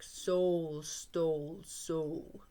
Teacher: the repetition of the S sound in all three words, and the long O vowel sound is the assonance